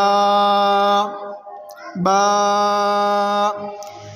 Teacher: با کو دونوں ہونٹوں کے تار حصے سے ادا کریں گے